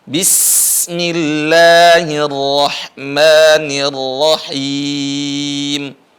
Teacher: ingat Sin itu tipis dan keras